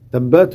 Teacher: on n'a pas de qalqala ici, puisque elle n'est pas sakina